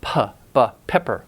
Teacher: stop the airflow momentarily then release the air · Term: bilabial